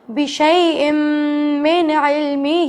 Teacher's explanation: بشیء من علمہ، اب ہی کو یہاں پر ہمیں لازمی کھینچنا ہے کیونکہ ہا کے نیچے مد واجب ہے، چھوٹا مد ہے، 2 الف کے برابر کھینچنا لازمی ہے